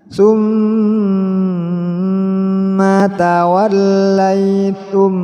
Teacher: mim mati bertemu dengan mim, didengungkan